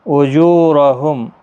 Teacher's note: اجورہم، اجو واو مدہ ہے، را زبر کی وجہ سے پر پڑا جائے گا